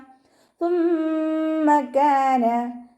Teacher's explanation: ثم كان സ ഉച്ചരിക്കുമ്പോൾ ലൈറ്റാക്കിയിട്ട് ഉച്ചരിക്കുക. കുറച്ച് എയർ പുറത്തോട്ട് പോകണം, പല്ലിൻ്റെ ഇടയിലൂടെ കുറച്ച് എയർ പുറത്തോട്ട് പോകണ രീതിയിൽ വേണം ഉച്ചരിക്കാൻ